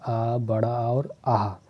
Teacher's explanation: छोटा आ, बड़ा आ और आह, ये जो 3 स्वर हैं ये तीनों कहाँ से निकलते हैं, कंठ से